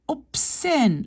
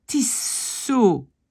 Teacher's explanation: Le Z devient S.